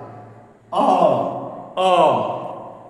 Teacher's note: हमारे कंठ से हवा निकल रही है बिना बाधा के, यानी दांत, जीभ, ओष्ठ आदि के बाधा के बिना निकल रही है। आप उच्चारण करके देखिए हमारे साथ, कंठ से हवा गरम गरम निकल रही है बिना बाधा के। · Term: स्वर वर्ण